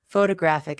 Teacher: Photographic adjective is stressed on the third.